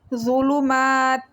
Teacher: ضا کو موٹا پڑھیں گے اور نرم پڑھیں گے · تا کو لام کے ساتھ ملائیں گے. مشدد لام کو 1 سیکنڈ کے لیے رک کے پڑھیں گے اور اس کے ساتھ الف مدہ ہے، 1 سیکنڈ کے لیے اس کو لمبا کریں گے.